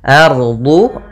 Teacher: Kemudian di sini alif lam qamariyah lagi, lam dan alifnya tertulis dan dibaca. Ardu, ra-nya tebal, yaitu ra tafkhim, karena dia ada huruf ra sukun di dalam fathah.